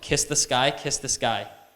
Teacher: sky kiss the sky because they turn into the same sound because s plus a K turns into kind of like a G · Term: unaspirated